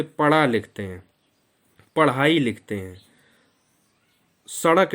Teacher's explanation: ये आगत व्यंजन है, इन्हें उत्क्षिप्त या द्विगुण व्यंजन के नाम से जाना जाता है।